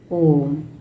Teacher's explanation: प्लुत स्वर में केवल एक ही स्वर आता है जिसको हम बोलते हैं ओम इसका लंबा उच्चारण होता है